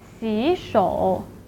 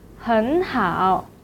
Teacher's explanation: the first third tone should be changed to the second tone